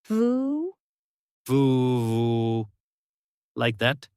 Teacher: You can feel the vibration, right? Your lip and teeth are touching.